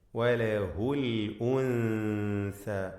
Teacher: സാക്കിന നൂനിനെ ഇഖ്ഫ ഹഖീഖി നൽകി അവ്യക്തമാക്കി മണിക്കുക